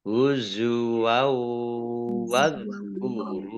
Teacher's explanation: Fathah tanwin bertemu dengan huruf wawu, bacaan idgham bi gunnah, masuk dengan mendengung ya, mendengung wawu, ditandai wawunya ada tasdidnya, dibaca double.